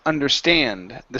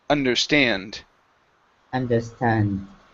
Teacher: Okay, this word here is understand. The stress is at the end of this word.